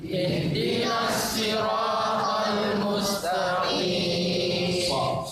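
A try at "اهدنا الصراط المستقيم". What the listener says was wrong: Jadi nanti ihdinas, bukan shin, ihdinas siratal mustaqim.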